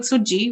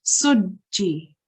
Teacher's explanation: Notice that I'm expressing the jeem quite strongly because that's how you join it onto the letter before it. So instead of saying sujji, which is very soft, we say it quite strongly, sujji, and we express both sounds. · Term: mushaddad